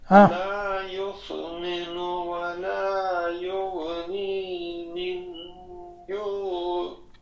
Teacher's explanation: نون کو تھوڑا کھینچیں، آگے یا ہے، یا ساکن ہے، مد ہے